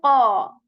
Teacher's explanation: You are not going to shape your lips in a round position. Rather, you are going to raise the back part of the tongue to make it sound heavy.